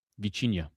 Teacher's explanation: the T has a little CH in it